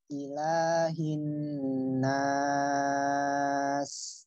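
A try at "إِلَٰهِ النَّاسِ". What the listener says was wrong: Kepanjangan. Ya, itu boleh sih. Cuman kalau mau dua, bagusnya konsisten ya. Dua, tiga.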